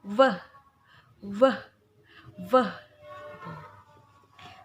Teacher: Jadi gigi atas depan bertemu dengan bibir bagian bawah sampai menimbulkan getaran. Lalu ucapkan V sampai dia menimbulkan getaran seperti ini ya. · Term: voice consonant